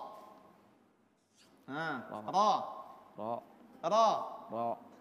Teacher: Ujung lidah menyentuh langit-langit bagian atas, bukan pertengahan lidah ya. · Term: huruf ra